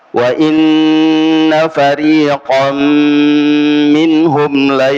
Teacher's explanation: qaf agak ke belakangnya, ini dia adalah huruf itbaq, maka dia lebih tebal.